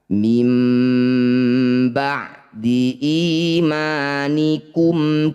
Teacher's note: Bunyi nun sukun tukar dengan mim. Jadi langsung rapat bibirnya dengungkan dua harakat. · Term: iqlab